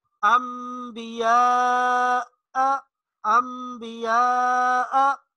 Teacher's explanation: نون ساکن یا تنوین کے بعد با، لفظ با آ جائے تو نون ساکن یا تنوین کو میم سے تبدیل کر دیتے ہیں۔ نون ساکن یا تنوین کے بعد با آ جائے تو وہاں با نہیں پڑھیں گے بلکہ اس کو میم سے تبدیل کر دیں گے اور غنہ کے ساتھ پڑھیں گے۔